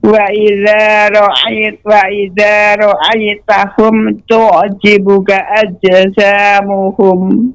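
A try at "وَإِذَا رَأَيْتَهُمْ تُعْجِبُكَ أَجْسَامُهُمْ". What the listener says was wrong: Ya, namun C-nya tetap tajam Ibu. Ajsamuhum. Ajsa. Nah, ajsa. masih Ibu, masih. Ajsa. Ajsamuhum. Ajsa. Langsung masuk ke sin. Ajsa. Dia memantul. Qalqalah. Ajsa.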